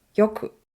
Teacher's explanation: The pitch accent of よく is on the よ.